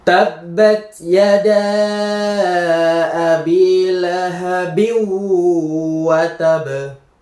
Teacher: ini nun sukun bertemu dengan wau langsung dimasukkan ke huruf selanjutnya. Nunnya juga tidak dibaca. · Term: idgham bigunah